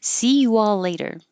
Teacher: there'll be an invisible W cuz you're going from a rounded you to an unrounded all